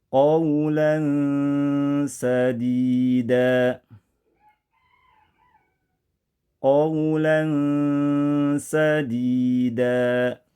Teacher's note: Baca dengan suara tanwin yang terdengar samar-samar, ya, mengambang antara bunyi idhar dan idgham. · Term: ikhfa